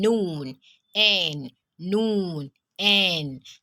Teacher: It is pronounced from the tongue, and then it is characterized by the lips remaining open. Tongue remains behind the teeth and touches the back of the front upper teeth, plus air and sound coming from the nasal passage.